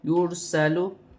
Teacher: را ساکن ہے، را ساکن سے پہلے پیش ہے تو را موٹی پڑھی جائے گی